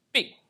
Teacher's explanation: her P has a short release. It does not have that extra puff of air